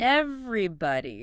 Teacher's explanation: Everybody sounds like everybody. 4 syllables. Stress on the first part. Everybody. Try saying everybody.